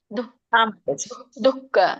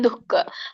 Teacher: ಮಧ್ಯದಲ್ಲಿ ಏನು ವಿಸರ್ಗ ಇರುತ್ತಲ್ಲ ಹಾಗೆ ಹ ಉಚ್ಚಾರಣೆ ಬರುತ್ತೆ ಅಲ್ಪವಾಗಿ